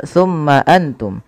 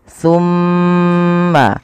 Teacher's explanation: Yang pertama, kita harus perhatikan pada lafal mim berharakat tasydid. Ketika mim itu berharakat tasydid, wajib ditahan suara gunnahnya.